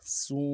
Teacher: واو مدہ ایک الف مقدار میں کھینچیں گے۔ واو مدہ ہو یا پیش ہو ان لوگوں کو خوب گول کریں گے۔